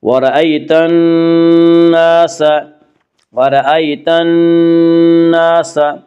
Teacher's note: نون مشدد غنہ ہوگا، غنہ کی مقدار 1 الف ہے